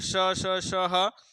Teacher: घर्षण के साथ उच्चारण होता है, इसलिए इसको संघर्षी वर्ण भी कहते हैं